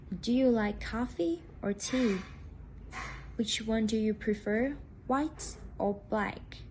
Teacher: the tone rises on the first part of the question and falls on the last part after or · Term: alternative questions